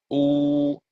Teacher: And you could try and say, your tongue does not change position. When we say ooh, the tongue in the back actually pulls. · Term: ooh sound